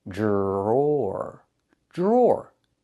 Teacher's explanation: The dr makes a J sound like in juice and jump. Plus the R.